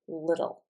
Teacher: In English, we do not put the L at the back of the mouth. We put it in the front. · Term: L sound